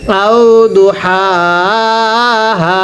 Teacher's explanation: প্রথম হাটা উচ্চারণের সময় গলার মাঝখান থেকে বাতাস বের করতে হবে, পরের হাটা উচ্চারণের সময় আওয়াজ করতে হবে